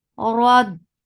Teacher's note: Ra will get sifa of takreer, little, and ra will be heavy because there is fatha on it. Rad. Dot will be heavy.